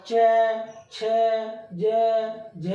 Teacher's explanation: तो आप जब भी ये बोलेंगे तो जो आपकी बीच का भाग है वो ऊपर दांतों के ऊपर की जो खाल है उससे टकराएगा, तालू से।